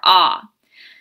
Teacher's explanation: is pronounced by simply opening the mouth and making a sound the sound is produced in the throat where the tongue is rooted